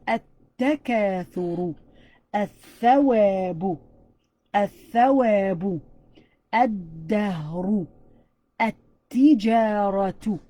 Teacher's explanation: we're totally taking out the L sound and we're going to be stressing on the one after it.